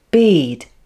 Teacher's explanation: there is the same vowel sound e but it is followed by the weak consonant d which is produced with less force so the e vowel sound is slightly longer